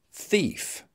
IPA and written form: θiːf (thief)